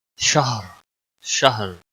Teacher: را وقف کی صورت میں موٹا پڑا جائے گا جب ساکن ہوگا